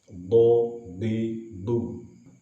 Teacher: Kemudian dotnya, dot ini termasuk juga huruf jahar. Dot juga memiliki sifat isti'la yang terangkatnya lidah ketika mengucapkan dot.